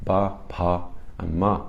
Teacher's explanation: All the letters you use, the consonants you use your lips to pronounce. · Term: labials